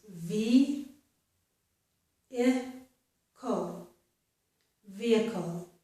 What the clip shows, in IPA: vi.ɪ.kl̩